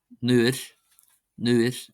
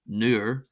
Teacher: Then we have nuit, nuit, not nuer. This is a slender R, it's not a broad R, it's not a r, it's not a r.